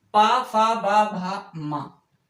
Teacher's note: और पा फा बा भा मा यानी पा वर्ग का उच्चारण जब हम करते हैं तो हमारे उच्चारण करते समय हमारे ओठ आपस में मिल जाते हैं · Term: ओष्ठ व्यंजन